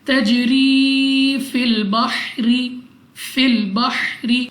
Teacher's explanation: रॉ के नीचे ज़ेर तो रॉ को बारीक पढ़ेंगे। तजरी फिल बहरी अलिफ से पहले जबर अलिफ मद्दा 2 सेकंड तक खींचकर पढ़ा जाएगा।